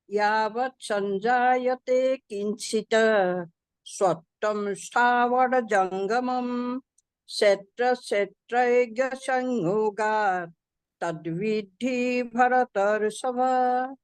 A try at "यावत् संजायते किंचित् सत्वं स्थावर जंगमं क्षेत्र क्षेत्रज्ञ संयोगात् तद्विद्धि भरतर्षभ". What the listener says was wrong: विद्धि पे ज्यादा मत रुकिए। तत्विद्धि भरतर्षभ, तत्विद्धि भरतर्षभ, तत्विद्धि